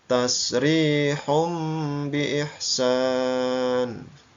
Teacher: suara tanwinnya berubah menjadi suara mim ya tasrihum biihsan domatain bertemu dengan huruf ba atau huruf iqlab